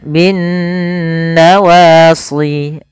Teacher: Kemudian bin nawasli, alif lam syamsiyah, yang dimana alif dan lamnya memang tertulis tapi tidak dibaca lamnya, sehingga langsung diidghamkan, dimasukkan ke huruf nun, sehingga nunnya berharakat tasydid. Kemudian pada lafal nun sendiri ini ada hukum tajwid berupa bacaan gunnah, yaitu nun terjadi apabila ada nun berharakat tasydid atau mim berharakat tasydid.